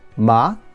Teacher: rising ma is hemp